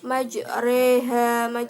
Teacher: tanda imalah di mana majroha dibaca majreha